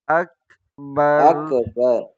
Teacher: کاف کو موٹا نہ کریں، کاف کو باریک کریں